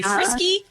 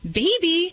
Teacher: we try to end the name on a vowel, especially because that makes our voice kind of, um, rise at the end